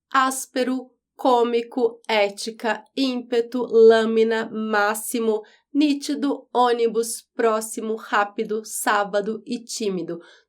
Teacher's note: ela é proparoxítona tem a antepenúltima sílaba mais forte